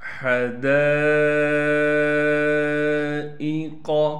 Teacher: الف حروف مدہ میں سے ہے اور الف پر مد ہونے کی وجہ سے دال کو 5 الف کی مقدار کھینچیں گے۔ حمزہ کو بغیر کھینچے بغیر جھٹکے کے پڑھنا ہے، قاف کو موٹا کر کے پڑھیں گے بغیر کھینچے۔